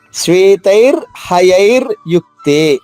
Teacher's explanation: ర పొల్లుగా చెప్పాలి హ పూర్తిగా చెప్పాలి అంతేనండి